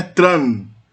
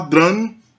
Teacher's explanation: Então o T sofre uma lenição, nesse caso uma consoante oclusiva surda, como o T, vira uma oclusiva sonora